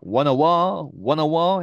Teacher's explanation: T 발음 빠지고요. won과 어가 연음되면서 won a war 이렇게 발음하고 있습니다.